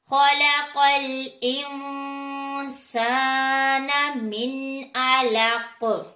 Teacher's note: कॉफ जो है उसके ऊपर जज़म आ जाने की वजह से कलकला करेंगे, क्योंकि यहाँ पर हमने आया को कंप्लीट करना है इसलिए, और काफ हरूफ मुस्तालिया में से भी है। · ख हमारा हरूफ मुस्तालिया में से है, कॉफ हरूफ मुस्तालिया में से है, दोनों को मोटा पढ़ेंगे। नून साकिन के बाद हरूफ इफ़ा में से सीन आ रहा है, गुन्ना करेंगे।